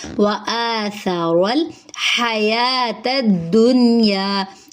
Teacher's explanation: ہا سانس جاری کریں گے، یا کے اوپر کھڑا زبر ہے، ایک الف کے برابر لمبا کریں گے۔ تا کو دال سے ملائیں گے، دنیا۔